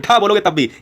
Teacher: बहुत झटके के साथ जब जीव नीचे आती है तालू को छूते हुए वही उत्क्षिप्त व्यंजन है